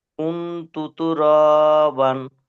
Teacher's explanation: নুন সাকিনের আওয়াজকে নাকে তুলে একালি পরিমাণ গুন্না করে পড়তে হবে